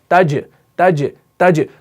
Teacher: अब जीम यहां पर सुकून के साथ है, तो यहां पर एक सिफत इसके अंदर पैदा होगी कलकला की